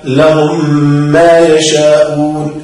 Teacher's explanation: إذن إدغام حرفين متشابهين بحيث صراع حرفا واحدا عند النطق به ميم ساكنة بعدها ميم متحركة ويسمى إدغاما شفويا